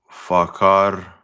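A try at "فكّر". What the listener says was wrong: Fakra. That's a shadda there. Fakara.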